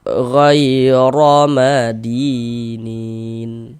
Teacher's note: pangkal lidah kita naik terangkat ke atas ketika kita mengucapkannya. Ditebalkan huruf ron-nya ghair madinin. · Maka huruf ro yang memiliki harakat fathah atau tanda baca fathah maka huruf ro dibaca tabkhim dibaca tebal. sehingganya pangkal ee lisan kita, pangkal lidah kita naik terangkat ke atas ketika kita mengucapkannya.